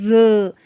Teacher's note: अगर हम बात करते हैं र की बात करते हैं तो इसे हम लुंठित व्यंजन कहते हैं, क्योंकि इसमें जो है मतलब जो है ध्वनि जो होती है लुंठित होती है, जीभ की नोक वत्सर्य को एक से ज़्यादा बार छूती है र, इसलिए हम इसको लुंठित व्यंजन कहते हैं।